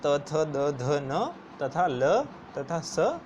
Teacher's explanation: ऋतु लसानाम दंतव्य, यानी कि र, त वर्ग पूरा, त थ द ध न तथा ल तथा स, ये सभी नाम वाले हमारे दांत से उच्चारित होते हैं